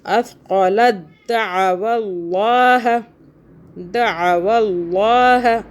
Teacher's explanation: اللہ کو موٹا پڑھیں گے کیونکہ اللہ سے پہلے جو ہے واو کے اوپر زبر آ رہا ہے. اگر زیر ہو تو اللہ باریک پڑھا جاتا ہے.